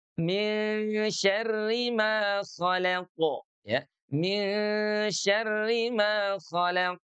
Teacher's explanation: Nah, oleh karena ro-nya kasroh, maka dia dibaca tarkik. Maka dia dibaca tipis.